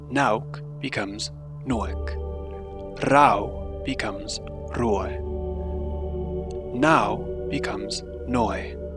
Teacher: The diphthong au is raised to oe. For example, nauk becomes noek, rau becomes roe, now becomes noe.